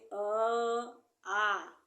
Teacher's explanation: अ आ कहां से बोले जाते हैं कंठ द्वारा